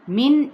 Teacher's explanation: من یہاں پہ نون کی آواز کو ظاہر کر کے پڑھیں گے کیونکہ آگے ہا موجود ہے جو کہ وسط حلق والا لیٹر ہے اور حروف حلقیہ ہے۔